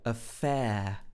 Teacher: And in affair, you have the long diphthong sound, air.